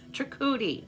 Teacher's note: Trikuti, it is on the second syllable